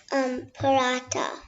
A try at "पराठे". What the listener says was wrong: Paratha, but what is the matra? पराठे, क्योंकि ये ए मात्रा है and this is plural.